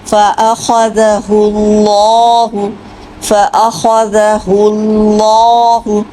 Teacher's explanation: تو پہلا لفظ دیکھیے فَأَخَذَهُ اللَّهُ، اس میں خا اور اللہ کا لام یہ موٹا پڑھنا ہے آپ نے، فَأَخَذَهُ اللَّهُ فَأَخَذَهُ اللَّهُ، تو اللہ کے لام کو آپ نے موٹا پڑھنا ہے کیونکہ اس سے پہلے پیش آئی ہوئی ہے